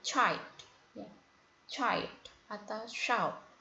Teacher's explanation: Itu merupakan bunyi yang dihasilkan dari lidah diletakkan pada langit-langit, sh dan ch ya. Sh pada shout dan ch pada child. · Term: palatal